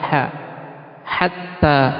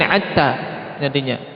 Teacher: Kalau ha dihilangkan sifat hamsnya jadi ain.